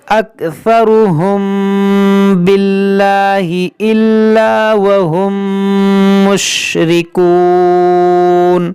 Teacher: میم ساکن کے بعد حرف با ہے تو یہاں پر اخفاء شفوی کا قاعدہ لگے گا، یعنی یہاں پر ہم غنہ کریں گے